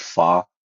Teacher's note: the A, it's like an ah sound. It's like an open ah sound, like in the word fa.